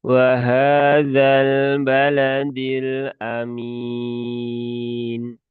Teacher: huruf dal ini dia keluarnya ujung lidah dengan tempat tumbuhnya gigi seri atas atau mudahnya ya di gusi ya. Jadi jangan sampai dia terlalu naik menjadi di, baladi, balada, da.